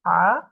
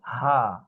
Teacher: গলার মাঝখানে চাপ দিয়ে হা, আর এটি হা, একদম ওপেন